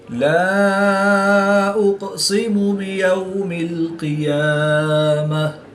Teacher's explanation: واو ساکن سے پہلے یا پر زبر ہے تو واولین اس کو لمبا نہیں کریں گے